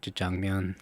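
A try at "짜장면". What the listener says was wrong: Why do you say it like that? Jjajangmyeon. No, you did. You put the emphasis on the wrong syllable.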